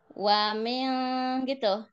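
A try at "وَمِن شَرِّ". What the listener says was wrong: Nah, itu masih wamil, wamil, wamil gitu tadi. Jadi langsung ke E dianya.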